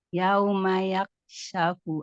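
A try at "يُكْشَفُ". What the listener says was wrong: Masih yak bacanya. Harusnya bukan yak. Bukan. Lihat harokatnya yuk. yuk.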